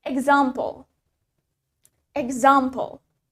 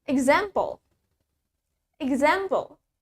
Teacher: the British accent has longer A. Di British accent punya bunyi A yang jauh lebih panjang daripada American accent.